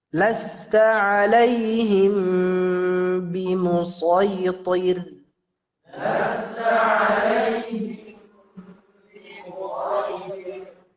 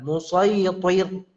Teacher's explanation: Di sini ada dicatat roknya tipis, ya, roknya tipis, bukan dibaca dengan tebal.